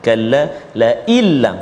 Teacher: nun mati bertemu dengan lam, iaitu idgham bila gunnah, tanpa dengung